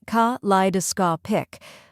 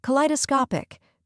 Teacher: Next is li, which rhymes with fly and is the stressed syllable.